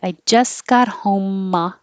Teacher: you don't have to say the t really